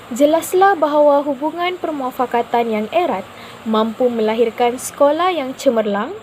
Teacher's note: untuk ayat penyata ia akan dibaca dalam suara yang mendatar dan juga jelas